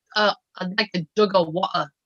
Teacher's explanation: Well, that sounds more kind of Cockney where they have the glottal stop for the T